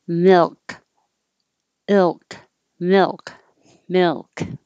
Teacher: the key is that the air is still coming out the sides of the tongue